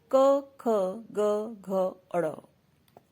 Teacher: क, ख, ग, घ, ड़ कंठव्य कहे गए हैं क्योंकि इनके उच्चारण के समय ध्वनि कंठ से निकलती है।